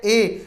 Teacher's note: अर्ध संवृत स्वरों में अग्र जो जीभ के हिस्से से बोले जाने वाला स्वर है ए